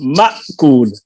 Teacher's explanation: حمزہ میں آواز بند ہوتی ہے، شدت ہے اس میں